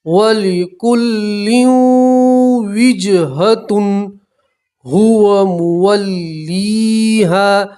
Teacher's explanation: تنوین کا واو کے اندر ادغام کریں گے